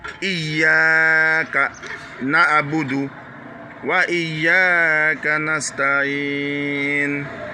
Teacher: non seulement le Y doit être dur, mais le A aussi doit être une voyelle longue.